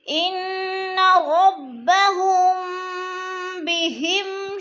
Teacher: ہم پہ اخفاء شفوی، میم ساکن کے بعد با آ جائے تو اخفاء شفوی اخفاء کریں گے، ناک میں آواز لے جائیں گے